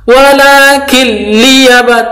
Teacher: Walakin liyaba, tanwin non sukun bertemu dengan lam, bacaan idgham bila gunnah, masuk tanpa mendengung